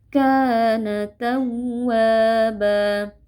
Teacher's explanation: Kana tawwaba, huruf waw tasydid kita beri penekanan atau nabrah sedikit ya, tidak perlu berlebihan. Tawwaba, tapi tidak boleh juga terlalu kendor.